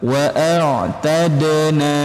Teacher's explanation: di bagian dal sukun ini huruf-huruf qalqalah dipantulkan teman-teman